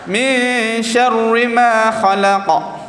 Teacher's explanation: Kita mentebalkan huruf ra yang awal tu dan kita menipiskan huruf ra yang kedua tu yang baris bawah.